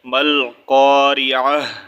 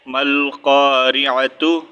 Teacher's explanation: اس کو جب ہم وقف کریں گے تو اس کا ساؤنڈ جو ہے ہم ہا میں چینج کر دیں گے، ٹھیک ہے۔ ملقارعہ، پھر ہم یہاں پر تا نہیں ریڈ کریں گے، پھر ہم ہا ریڈ کریں گے، صحیح ہے۔